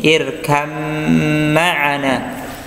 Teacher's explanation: Kemudian yang berikutnya adalah yalhas dzalika, ya, ini ya, ya, irkam ma'ana, ya, irkam, seolah-olah tidak ada baknya, ya, padahal irkab, ya, aslinya adalah irkab ma'ana, tapi langsung masuk ke huruf mim